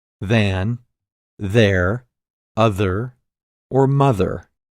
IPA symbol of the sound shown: ð